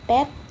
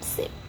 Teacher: Voiceless sounds, bunyi tak bersuara, pita suara tidak bergetar.